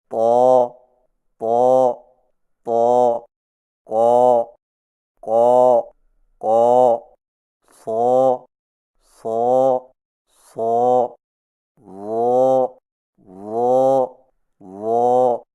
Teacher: طا، قاف، صاد اور ضا کی ادائیگی میں زبان کی جڑ کو اوپر اٹھا کر موٹی آواز میں پڑھیں